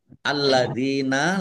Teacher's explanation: Lam fathah berdiri mad thobi'i panjang dua harakat. Alladzina lamnya dibaca dobel ada tasdidnya. Dal kasrh ya sukun mad thi.